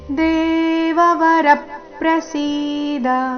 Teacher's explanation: ದೇವವರ ಶಬ್ದದಲ್ಲಿ ರ ಮೇಲೆ ಆಘಾತ